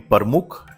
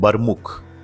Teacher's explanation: Pramukh, for example, became Parmukh in more colloquial or regional speech. Persians softened the P into a B